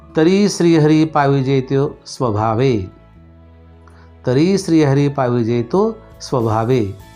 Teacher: ऱ्हस्व आहे म्हणून तिथं लघु आहे. री हा दीर्घ आहे, जास्त उच्चार होतो म्हणजे तिथं गुरु आहे.